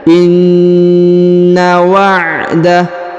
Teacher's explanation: huruf na ditahan dan ditekan karena berharokat tasdid ya, maka dibaca inna wa'dallahi.